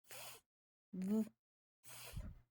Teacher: So your lower lip is inside, it's making the sound v, just like you make the sound f. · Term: v sound